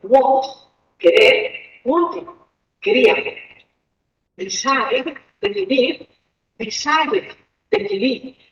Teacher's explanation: En los primeros tenemos que añadir una sílaba al pronunciar el pasado, y esta sílaba es it.